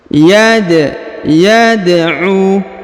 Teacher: huruf Dal berharakat sukun maka kita pantulkan atau kita qalqalahkan Yad yadu kemudian huruf u dipanjangkan kurang lebih dua harakat karena · huruf u dipanjangkan kurang lebih dua harakat karena di depannya terdapat wau sukun